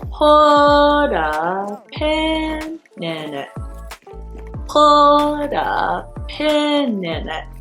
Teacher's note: these 5 words are all grouped together. There are no breath taken when you're saying it.